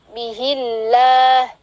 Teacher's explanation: lamjalalah didahului dengan kasrah maka ditipiskan